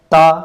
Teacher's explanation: जीभ हमारी ऊपर दांतों और तलुए में टच हो रही है। स्पर्श प्रकृति का है।